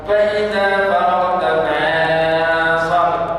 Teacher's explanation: ghunnah mufakhamah, dengung yang tebal ketika bertemu dengan huruf tebal